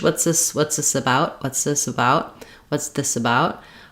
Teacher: in casual fast speech, I could kind of drop that TH. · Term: drop the TH